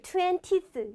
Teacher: 중간에 어를 빼먹는 거예요